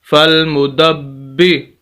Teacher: سخت کر کے پڑھنا ہے با کو اور آواز کو روک کر